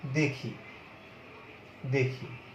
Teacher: যেমন দেখি, দেখি, এখানে এ ধ্বনি কিন্তু কি হচ্ছে, সংবৃত। এটার উচ্চারণ এরকম, দেখি বললে হবে না, দেখি।